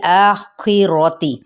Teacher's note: खौ हरूफ मुस्तआलिया में से है, जो कि हर हालत में पुर ही पढ़ा जाता है · बा की ज़बर को लाम के साथ मिलाना है, लेकिन लाम को हिलाना नहीं है